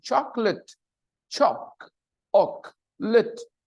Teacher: when you listen to the pronunciation chocolate choc Ock lit it there are only two vowel sounds and the stress is on the first